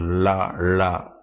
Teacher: எல் என்று சொல்லக்கூடியது. நாவின் இரு பக்கங்கள் தடித்து மேல் அன்னத்தின் நடுப்பகுதியை தொடுவதால் அந்த லகரம் தோன்றுகிறது. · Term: பெரிய லா